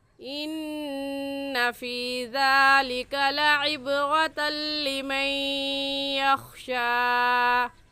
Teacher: یا دیکھنے میں ایک ہے اور پڑھنے میں 2 مرتبہ پڑھا جائے گا، ایک مرتبہ نون کے ساتھ ملا کر اور دوسری مرتبہ خود. تو نون ساکن پر یہاں پر غنہ ادغام کے ساتھ ہوگا.